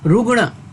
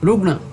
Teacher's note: शुद्ध और सही शब्द है रुग्ण, ये ट वर्ग का ण है